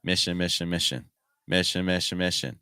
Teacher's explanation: these in sounds are very weak they're very fast and they're very low in Pitch we don't want them to get too much emphasis okay so